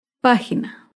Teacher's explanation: Página se acentúa en la antepenúltima sílaba. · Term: palabra esdrújula